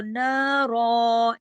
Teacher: جب رکتے ہیں، جب عارضی سکون کرتے ہیں تو ایک زبر پڑھی جاتی ہے اور ایک الف کے برابر اسے کھینچا جاتا ہے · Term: دو زبر کی تنوین